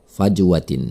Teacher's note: ada huruf Jim mati ditengah kata tersebut Hai maka cara membacanya adalah dengan memantulkannya dengan pantulan kecil